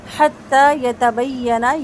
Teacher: مشدد یا ہے نبر کر کے پڑھیں گے یعنی آواز تھوڑی سی بلند کر کے